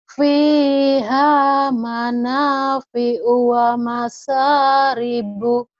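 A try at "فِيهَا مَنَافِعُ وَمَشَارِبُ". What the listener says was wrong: Nah, dengan suaranya ya. Jadi kayak diputus-putus gitu. Ya apa-apa karena memang belum ketemu itunya.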